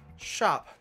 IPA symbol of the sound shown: ʃ